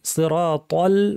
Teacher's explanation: সিরাতাল বলার সময় ত ভারী লাম পাতলা খেয়াল করতে হবে